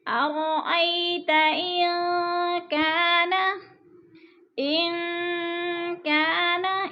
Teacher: ان کی نون ساکن کے بعد کاف حروف اخفا میں سے ہے تو اخفا ہو رہا ہے، ناک میں آواز لے جائیں گے، لفظ کو چھپا کر پڑھیں گے۔